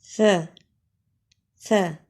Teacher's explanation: स स ये भी एक अलिफ के बराबर लंबा करना है स के अदा में जबान का किनारा सनाया उलिया के किनारे से लगे तो स अदा होता है